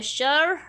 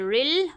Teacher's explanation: شین کے اوپر زبر ہے اور را کے نیچے زیر ہے، را کو باریک پڑھیں گے، ساتھ میں را پہ تشدید ہے، تو را کو ہم 2 دفعہ پڑھیں گے، ٹھیک ہے۔ تشدید والا حرف 2 دفعہ پڑھا جاتا ہے، ایک دفعہ اپنے سے پہلے متحرک حرف کے ساتھ، اور دوسری دفعہ خود اپنی حرکت کے ساتھ ذرا پڑھ کے حرکت کے ساتھ مل کر پڑھا جاتا ہے۔